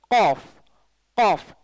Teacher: காஃப் காஃப் உயர்த்தி சொல்லணும், காஃப் வாய் திறந்து காஃப் காஃப் QAAF மாதிரி காஃப் காஃப் காஃப். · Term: உயர்வான எழுத்துக்கள்